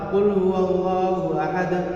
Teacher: Tanda-tanda qalqalah kubra adalah jika ada qalqalah, huruf qalqalah berada di akhir ayat, maka dibacanya dengan qalqalah kubra. Dan qalqalah kubra itu membacanya dengan ditekan.